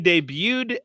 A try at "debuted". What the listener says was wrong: No, it's debuted. The T is silent.